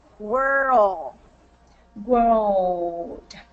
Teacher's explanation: So it's a slight difference between word and world, but it's just that drop of the tongue in our mouth to create that dark L.